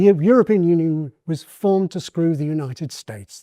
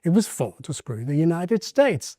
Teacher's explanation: He switches to what's called the surprise redundancy contour by some people. And here he's using it in the redundancy sense.